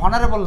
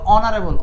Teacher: এইচ এর উচ্চারণ না, এটা কিন্তু হনারেবল না, এটা হলো অনারেবল অ